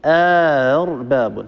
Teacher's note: نسهل الهمزة الثانية بين الهمزة وبين الألف، يعني ندخل ألف بين الهمزتين ونسهل الهمزة الثانية بين بين، فيصير النطق أرباب، هكذا أرباب، هذا شيء.